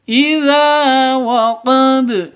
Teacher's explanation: Za panjang 2 ketukan karena ada alif diawali dengan fathah, mad asli atau mad tabi'i.